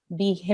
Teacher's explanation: make sure you make a nasal sound which should last for 2 seconds. Okay, bihimma, 2 seconds holding the meme, 2 seconds elongating because of the alif mada. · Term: meme gunna